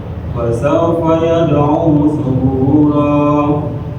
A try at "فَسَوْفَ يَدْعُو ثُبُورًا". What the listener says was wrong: Ya taknya kayak urut. Bukan bunyinya gini. Ini nggak ada desisnya. Dengan tak.